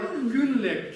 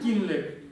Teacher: Бутанцы у читают как и. Да. Поэтому у них дупа кюнлек читается как кинлек.